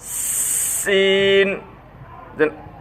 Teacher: সিন জিহ্বার আগা সামনে নিচে দুই দাঁতের আগের সাথে লাগাইয়া শীষ দিয়া